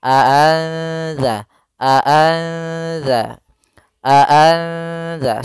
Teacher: di ikhfa itu di antara keduanya masih ada suara nunnya sedikit tapi disamarkan ke huruf setelahnya. Maka di sini cara membacanya adalah nunnya disamarkan kepada huruf dalal. · cara membacanya adalah nunnya disamarkan kepada huruf zal